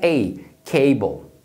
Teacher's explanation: que você divide você vai ter a primeira sílaba como ca se termina na própria vogal você pronuncia com o som longo que é ei cable